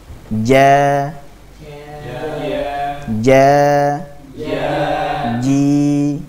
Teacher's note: huruf jim itu keluar dari tengah lidah dengan cara menempelkan pada langit-langit atas. Jadi dengan cara menempelkan tengah lidah tersebut pada langit-langit atas, sehingga makhrajnya betul-betul tertutup dengan sempurna.